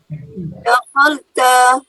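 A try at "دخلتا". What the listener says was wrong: Dakhalata. La-nya patah. Tampilnya.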